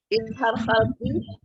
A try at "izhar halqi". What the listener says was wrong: Azabun izhar halqi. Jangan bilang izhar khalqi. Halqi. Halq artinya tenggorokan.